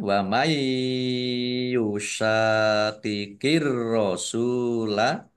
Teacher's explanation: Nun sukun bertemu dengan huruf ya. Bacaan idgham bi gunnah. Masuk dengan mendengung. Yaitu mendengung ya.